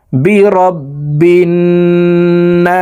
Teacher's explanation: না এখানে 3 আলিফ টেনে সিনকে সাকিন করতে হবে, কারণ মদের হরফের বামের হরফে ওয়াকফ হইলে মধ্যে আরজি 3 আলিফ টেনিয়া পড়িতে হয়।